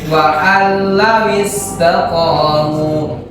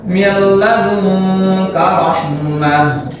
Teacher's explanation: Itu adalah idgham bila gunnah. Ya, itu adalah idgham yang dibaca tanpa gunnah. Berbeda dengan idgham bigunnah.